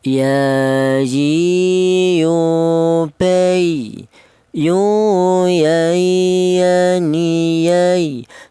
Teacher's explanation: Huruf wawu dihasilkan dari kedua bibir yang renggang. Huruf ya ini keluarnya huruf berasal di tengah lidah